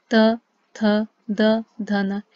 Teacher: ऐसे आप देखेंगे दंत, त, त बोलने पर त, थ, द, ध, न। इन सभी का उच्चारण करने पर हम पाएंगे हमारी जीभ का जो मतलब हमारी जीभ है वो हमारे दांतों से टकराती है